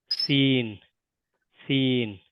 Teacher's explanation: সিন উচ্চারিত হবে জীবের টিপটা নিচের দাঁতের পিছনে টাচ করবে